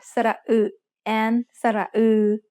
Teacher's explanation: a little bit like the sound that you get when you try to make the oo sound with the corners of your mouth spread wide apart